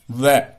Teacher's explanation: व का उच्चारण स्थान करोगे तो क्या होगा, दांत और जो औष्ठ है वो मिलकर के इसका उच्चारण करेंगे। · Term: दंतोष्ट